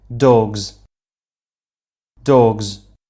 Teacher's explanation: a voiced sound this is our vocal chords vibrate the plurals ends up vibrating as well becoming a z sound